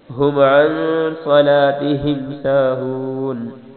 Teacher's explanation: ہم پہ غنہ نہیں کرنا کیونکہ آگے عین ہے، عن پہ غنہ کرنا ہے